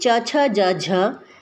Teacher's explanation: च, छ, ज, झ, इनका उच्चारण स्थान तालु।